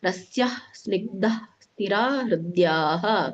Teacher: ಕೊನೆಗೆ ಮಾತ್ರ ವಿಸರ್ಗವನ್ನ ಪೂರ್ಣ ರೀತಿಯಾಗಿ ಉಚ್ಚರಣೆ ಮಾಡಬೇಕು